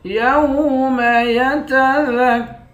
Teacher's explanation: ذال کو کاف کے ساتھ ملا کر کاف کو سختی کے ساتھ جمع کر پڑھیں گے، را کو موٹا پڑھیں گے۔